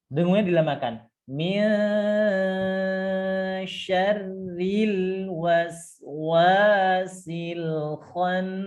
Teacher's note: Ya, perhatikan dilamakan minnya. Dengungnya dilamakan.